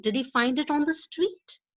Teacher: Yes or no questions, like did he find it on the street, often have a rising end, but not always.